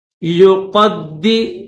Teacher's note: قاف کو موٹا کریں گے، قاف کو دال کے ساتھ ملائیں گے اور را کو لام کے ساتھ ملائیں گے، یہ درمیان میں